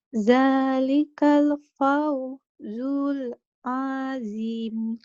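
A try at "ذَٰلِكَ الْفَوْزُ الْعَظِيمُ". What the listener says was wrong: Dzalikal fawzul azim. Ulang lagi, jangan putus-putus ya.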